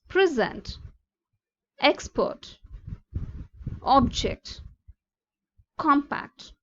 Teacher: stress on first syllable noun, how we pronounce it.